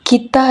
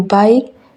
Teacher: bunyi K dalam kita diucapkan lebih jelas dibandingkan K dalam akhir kata seperti baik